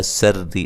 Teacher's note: را کو باریک پڑھیں گے، را کے نیچے زیر ہے